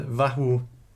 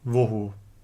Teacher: Also, in the transmitted text, we find the effects of an umlaut, in course of which a developed to o under the influence of a following u sound